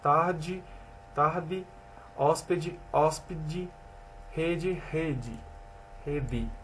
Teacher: O fonema D é igualmente pronunciado diante de E, com som fechado, em posição das sílabas átonas. Pronuncia o fonema em questão como um som em língua dental, tarde, tarde, hóspede, hóspede, rede, rede, rede.